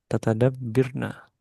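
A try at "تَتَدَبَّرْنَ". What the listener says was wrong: Tata dab. Harokatnya yang terakhir. Tata dab. Barna.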